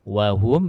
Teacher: Wa hum mim sukun bertemu huruf lam ilhar syafawi. Ya, dijelaskan mim sukunnya dan tidak boleh didengungkan.